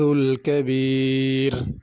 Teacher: الکبیر میں را کو باریک پڑھنا ہے